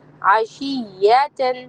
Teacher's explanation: شین کو یا سے جوائن کریں گے تو شین کی آواز تھوڑی سی لمبی ہو جائے گی. ٹھیک ہے، تھوڑی بڑھ جائے گی.